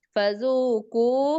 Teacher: zu panjang 2 harokat, ku panjang 2 harokat, kemudian falanna, nun tasydid tahan dulu